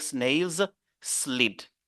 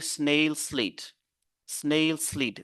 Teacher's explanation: Vous pouvez faire la liaison entre un mot qui se termine par S et un mot qui commence par S.